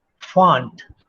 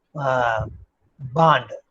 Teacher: a voiceless labiodental fricative fa